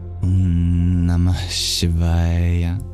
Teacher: The H in Namah, it flows very easily into the sibilant, the palatal sibilant sh of Shivaya. So imagine breathing out at the end of Namah into Shiva. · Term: visarga